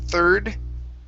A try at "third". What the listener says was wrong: One more time, pronounce that D at the end. Third.